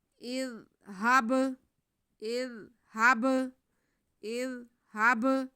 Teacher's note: با ساکن ہے، با حروف قلقلہ میں سے، اس لیے اس کو ہم ہلا کے پڑھیں گے، جنبش دے کے پڑھیں گے، واضح کر کے پڑھیں گے. · زال کو نرمی سے، بالکل بھی سیٹی کی آواز نہیں آنی چاہیے زال میں، بہت آرام سے ادا کرتے ہوئے آگے ہب پڑھیں گے.